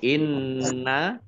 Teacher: Nun tasdid dibaca ghunah atau mendengung ditahan dua harakat